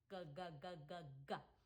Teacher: For this sound, we want the back of our tongue at the back of the roof of our mouth. So not the front of the roof of our mouth, not our alveolar ridge, but way in the back, in that soft palate back there. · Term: drinking sound